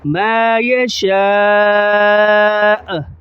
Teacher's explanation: حمزہ کی جو پیش ہے وہ وقف کی صورت میں ظاہر نہیں کریں گے پیش کو